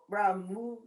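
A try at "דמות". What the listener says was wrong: It's not a resh. It's a dalid. Remember, resh is rounded. Dalid has the dent. Demut.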